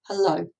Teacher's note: so no stress on the huh but then the stress goes on to low · it consists of one unstressed followed by a stressed syllable